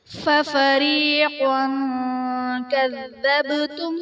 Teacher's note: تنوین کے بعد حروف اخفاء میں سے کاف آ رہا ہے تو یہاں پر اخفاء کا قاعدہ ہوگا، یعنی تنوین میں ہم غنہ کر کے پڑھیں گے۔ کذبتم، با حرف قلقلہ ساکن، یہاں پر قلقلہ خوب ظاہر کریں گے۔